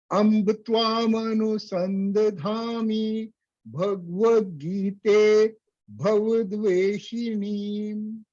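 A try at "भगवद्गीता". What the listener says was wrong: So it's not Bhagavat. Bhagavat. Ga is not halanta. So when we say Bhagavat, we are making Ga without the sound. That means Ga is a halanta. But because it is not a halanta, we have to say Bhagavat.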